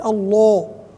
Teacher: الضغط الزايد في تفخيم لفظ الجلاله مثل الله الضغط الزائد هذا يسمى تغليظا وليس تفخيما هذ الملاحظه